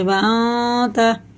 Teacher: ناک میں لے جا کے ایک الف کے برابر کھینچ کے تب پڑھیں گے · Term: غنہ